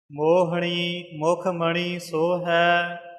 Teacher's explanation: ਮੋਹਣੀ ਨਾਣੇ ਨਾਲ ਮੋਹਣੀ ਨਾਣੇ ਦਾ ਉਚਾਰਨ ਰੱਖਣਾ, ਇੱਥੇ ਨੰਨਾ ਨਾ ਬੋਲਿਆ ਜਾਵੇ।